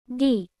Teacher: Similar to D in the English down. Softened to approach a T sound.